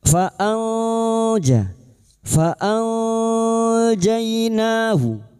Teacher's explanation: Kita samarkan bunyi nun sukun dan mendengung selama tiga harakat. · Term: ikfa hakiki